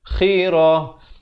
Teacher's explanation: Khirah. Dan ta marbutah bila waqaf ditukarkan kepada bunyi ha.